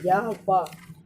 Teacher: इन व्यंजनों के उच्चारण में हवा बिना किसी संघर्ष के बाहर निकल जाती है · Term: अर्धस्वर